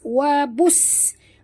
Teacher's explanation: bunyikan sofir pada huruf sin yang mati.